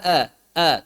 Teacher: yang pertama adalah mirip a lebih dekat ke a sedikit sekali miring ke e-nya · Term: imalah Sugra